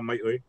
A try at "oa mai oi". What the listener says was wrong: Yeah, basically is it's like oa mai oi, but yours like I don't know flat. Yeah, oa mai oi. it doesn't. Oa mai oi.